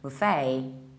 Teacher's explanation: so you shift the stress and you stress the second syllable